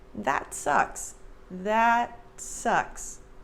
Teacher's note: there's no air released at the end of that t that sucks that sucks it just gently touches the top of · And for the American pronunciation, notice that I don't say that. There's no air released at the end of that T.